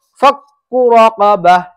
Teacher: یہاں پر عام طور سے بچے غلطی کرتے ہیں کہ اس کاف کو کھینچ کر پڑھتے ہیں. کاف کو کھینچنا نہیں ہے بلکہ بغیر کھینچے صحیح طریقے سے پڑھنا ہے.